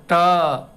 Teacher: ट बोलेंगे तो मूर्धा से आएगा सीधे शिखा के नीचे के स्थान ट